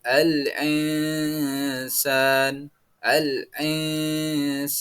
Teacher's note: khalaqna khalaqna selanjutnya alinan al-insan kita membaca tulisan aslinya alinsan namun dalam hukum tajwid kita itu dibaca samar dan mendengung